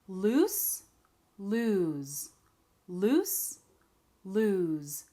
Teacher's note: One is that the vowel is elongated. We have the same vowel in both words, ooh, ooh, but one is longer than the other.